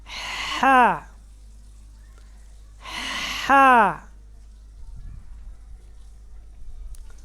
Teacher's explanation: یہ حروف حلقی میں سے ہے. وسط حلق گلے کا درمیان والا حصہ، یعنی حلق کے درمیان والے حصہ سے ہا ادا ہوتا ہے